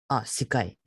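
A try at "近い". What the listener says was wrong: Kai. Not sa.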